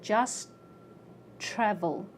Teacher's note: My tongue goes up for a T and it stays there.